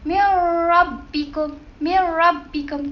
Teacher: Kita memasukkan terus tanpa dengun. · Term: idgham bila gunah